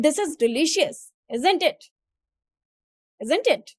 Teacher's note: When assuming the answer or making a quasi rhetorical comment, the voice falls at the end.